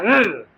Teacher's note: मैंने बोला ऋ, हमारी जीभ तालु में लगने के बाद अगर वापस आ रही है तो हमारा कैसा बोला जाएगा? मूर्धा स्वर बोला जाएगा।